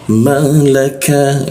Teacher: Lidahnya kita turunkan sehingga ada hembusan udara ketika membaca huruf ka.